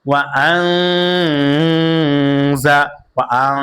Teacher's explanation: নুন সাকিনের পরে যা আসছে, এই কারণে নুন সাকিনকে গুন্নার সহিত মিলিয়ে পড়তে হবে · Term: ইকফার গুন্না